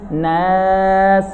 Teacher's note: Suara hidung terletak hanya di nun saja.